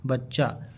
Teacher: यहां पर च जो है दो बार आया है बच्चा। तो इसको बोला जाता है युग्मक या द्वितत्व ध्वनि